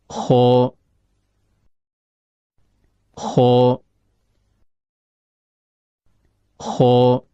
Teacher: Huruf K keluar dari ujung tenggorokan, yaitu berada antara langit-langit atas bagian belakang dengan akar lidah. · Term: huruf kha